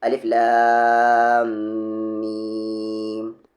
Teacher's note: لام کو لام پڑھیں گے، مد کا کام کھینچنا ہوتا ہے، آواز کو اوپر نیچے لے جانا نہیں۔ لام کو لام پڑھیں گے کھینچتے ہوئے، یہاں پر میم میں ملائیں گے، میم پہ شد ہے اس لیے غنہ ہوگا یہاں پر